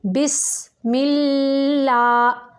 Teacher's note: لام باریک ہے کیونکہ اس کے پچھلے حرف کے نیچے زیر ہے